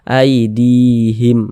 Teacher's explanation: ada harakat kasrah ini baris satu di bawah huruf harakat kasrah ada huruf ya ada tanda sukun sebelumnya ada harakat kasrah maka huruf yang memiliki harakat kasrah ini dibaca panjang sehingganya di dibaca panjang aidihim Mad Thobi'i panjang dua harakat maka